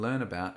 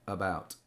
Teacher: the pronunciation of the preposition about is using the neutral form, the schwa